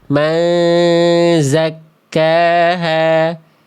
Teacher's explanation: Jadi tidak lagi dibaca nunnya dibaca man tapi dibaca ma samar dengung. Bunyinya udah enggak ada tapi udah samar menuju huruf zai.